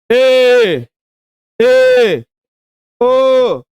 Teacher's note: अर्ध संवृत ऐसे स्वर के उच्चारण में जीभ ऊपर उठकर बीच में रहती है।